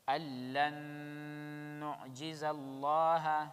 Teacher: أَلَّن نُعْجِزَ اللَّهَ, again nun mushaddad غنة, lam of Allah will be heavy